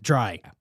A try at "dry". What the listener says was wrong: Dry with a D. Sounded like you said try.